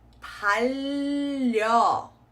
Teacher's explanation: See how I've carried that sound and I've held on to that L sound in the first syllable, carried it on into the next as well.